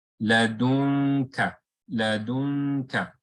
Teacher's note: I'm not going to pronounce the makhraj of noon, because if I do that, then I've done idhar. Rather, it's going to come close to the makhraj of noon, and then I'm going to slowly move towards the kaf, which is the back part of the tongue.